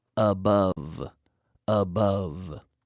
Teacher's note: this is like an F but a vocalized or voiced f sound